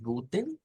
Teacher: esa e no existe lo que existe es una t después de una n